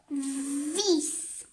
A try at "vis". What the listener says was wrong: Non, c'est pas f, c'est v. Non, ça commence pas par.